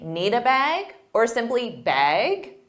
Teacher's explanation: Now, they might say, need a bag, or simply bag with a rising intonation to show it's a question. Plastic bags are not used at most stores in North America.